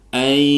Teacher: nun sukun bertemu dengan ya dibaca idgham bi gunnah